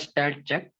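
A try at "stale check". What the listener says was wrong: Listen, you are pronouncing it wrongly. Stale, not stall. Stale. Stale check. STALE. Stale check.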